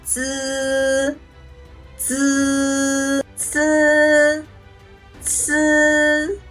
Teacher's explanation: The tip of the tongue touches against the back of the upper teeth, producing z with no strong airflow, similar to ds in the English word keys.